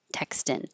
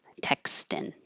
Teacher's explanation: So the ing in the back changes to the in the front, and the vowel changes from the high E to the more casual I.